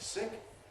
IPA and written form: sɪk (sick)